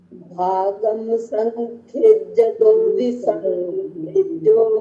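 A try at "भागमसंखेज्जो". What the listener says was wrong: माँ इधर लेना, भाग अलग लेना। भाग मसंखेज्य दो विसंखेज्यो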